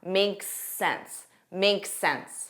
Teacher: So notice there's an S on make, but because the next word starts with S, you'll hear that one sound.